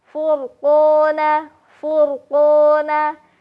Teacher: Karena sebelum huruf ro, yaitu huruf fa ya, harokatnya dhammah. Sehingga ketika kita menemukan huruf ro sukun yang sebelumnya harokat fathah atau dhammah, maka ro-nya akan dibaca lebih tebal. Furqona, furqona. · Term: dibaca tebal